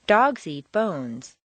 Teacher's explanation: when you're making a statement for the first time you'll stress the nouns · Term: statement intonation with nouns